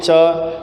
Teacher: च के उच्चारण में आपकी जीव तालू से जाकर के टच करती है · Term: स्पर्श वर्ण